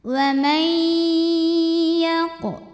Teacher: Maka cara bacanya nun dileburkan ke ya disertai bunyi dengung. Wa may, harus ada suara yang masuk hidungnya ya, suara ngirung ya. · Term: idgham bi gunnah